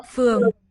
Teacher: UO is a diphthong, but it's opening up as we say it, right? Like a Spanish diphthong, yeah or where.